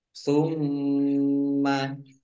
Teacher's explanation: Summa mim tasdid dibaca gunnah atau mendengung. Ditahan 2 harokat.